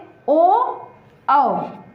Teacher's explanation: और कंठ और ओष्ठ दोनों से ओ, औ ये दोनों वर्ड बोले जाते हैं